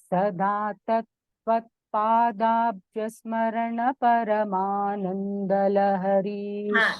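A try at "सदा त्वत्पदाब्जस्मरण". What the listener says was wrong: Tatra, you know what happened? The dvitvams, if you don't chant, the chanting becomes difficult. Sada tvat padabhyasmarana paramanandalahari. So, dvitvam there. Tvat padabhyasmarana. Sada.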